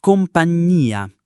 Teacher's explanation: in compagnia the I is present in the sound, it is heard, and it is also stressed